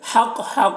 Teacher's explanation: حق، حق کو حق سے ادا کریں گے، اور یہاں پر علامت جیم یہاں پر ٹھہریں گے. جب ٹھہریں گے تو قاف میں قلقلہ ہوگا، کیونکہ زبر جو ہے وہ جزم سے سکون سے بدل جائے گا، تو یہاں پر قلقلہ ہوگا.